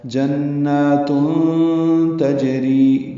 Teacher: تنوین کے بعد تا آنے کی وجہ سے اخفاء ہوگا